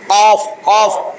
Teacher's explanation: একেবারে জিহ্বার গোড়া তার বরাবর উপরে তালুর সঙ্গে মিলাইয়া 2 নোক্তা ওয়ালা কফ